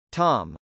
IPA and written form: tˈɑm (tom)